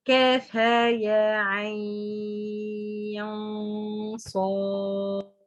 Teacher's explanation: كاف, you stretch it 6 counts. ها يا 2 counts. Ain 6 counts or 4.